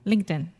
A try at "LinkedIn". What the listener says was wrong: Okay, but you don't have to say it so fast. LinkedIn. So just imagine, try it with the true T first. Say linked in. Now try it with the stop T. Linked in. It's almost like it doesn't even exist. It's very subtle, but it's super, super important. The different variations of the T sounds in English is one of the principal ways that we speak fast.